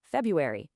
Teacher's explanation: In American English, especially, we almost always drop that first R. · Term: dissimilation